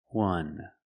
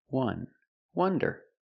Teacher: And wonder is pronounced with the short U, the sound like cup and up. This is a closed, relaxed sound.